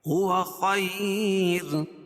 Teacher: اور وقف کی صورت میں یہ را جو ہے باریک ہوگی، کیوں؟ قاعدہ ہے کہ رائے ساکنہ سے پہلے یا ساکن ہو، یعنی را ساکن ما قبل یا ساکن ہو تو را ساکن ہر حال میں باریک ہوتی ہے، کیا پتہ ہے؟